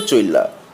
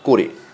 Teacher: অপনিহিতির ইকার বা উকার পশ্চিমবঙ্গের বিশেষ করে কলকাতা শহরের উচ্চারণে লুপ্ত হয়ে যায় এবং পরবর্তী স্বরধ্বনি একার বা ওকারে পরিবর্তিত হয়ে যায়। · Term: অভিশ্রুতি